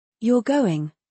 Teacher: You're going, with rising intonation is a question.